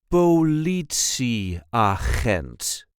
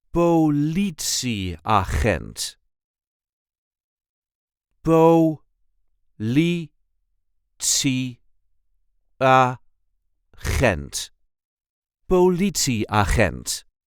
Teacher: There is a light emphasis on the second syllable.